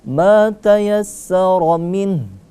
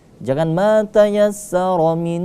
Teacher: jangan didengungkan kalau mau dilanjutkan. Jangan ma tayassara min, jangan didengungkan di situ. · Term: izhar